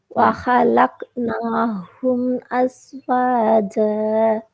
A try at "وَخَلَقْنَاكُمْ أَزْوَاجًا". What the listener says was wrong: ஹலக்குனாஹும் ஆகிக்குது. கும் அப்ப ஹும் ஓதப்படாது. காஃப கொஞ்சம் கலக்கி எடுங்களா.